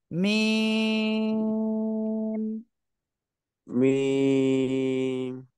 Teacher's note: এই মিম অক্ষরটা দুই ঠোঁটে শুকনো জায়গা থেকে উচ্চারণ হবে আর চার আলিফ টেনে পড়তে হবে